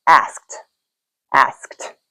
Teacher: you can add that t sound to the end without adding another syllable.